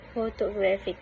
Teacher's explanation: the stress falls on the first syllable photographic, but there is also a lighter stress on the third syllable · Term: Secondary stress